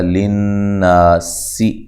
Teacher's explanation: للناسی نون مشدد پہ غنہ ضروری ہے ، نا الف مدہ ہے، سین کو باریک سیٹی سے، حس